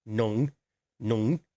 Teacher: 1, nung. Remember, it's down low.